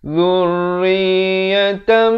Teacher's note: idgham bi gunnah di sini, tanwin bertemu mim, daripada dzurriyatan jadi dzurriyatam. Tapi jangan lupa dengungkan 2 harakat.